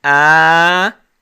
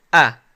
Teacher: the alif is 2 times the length of the fatha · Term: long vowel alif